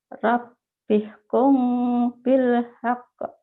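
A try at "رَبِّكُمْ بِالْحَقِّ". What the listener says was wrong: Ya jangan kong ya. Karena ini bukan ihfa biasa. Kom tapi bindeng. Rabbikum bil haqq.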